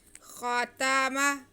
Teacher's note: خا پہ، تا پہ، میم پہ زبر ہے، ان کو بالکل بھی نہیں کھینچنا، ایک جیسا ہی پڑھیں گے